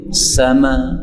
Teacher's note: ini kalau berhenti sama itu boleh hamzahnya dihilangkan kalau berhenti menjadi sama. Ini namanya qiraah Asyami, dan ini bacaan yang sangat memudahkan kita.